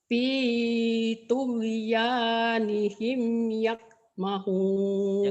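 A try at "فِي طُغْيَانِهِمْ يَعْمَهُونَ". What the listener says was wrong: Jangan yak. Kayak orang Jawa, orang Jawa G mati sama Ain mati ke K. Ibu ngikut-ngikutan juga. Jangan yak. jangan tok ke, tog ya nihim ya, jangan yak ya, jangan ke K. fi tughyanihim ya'mahun.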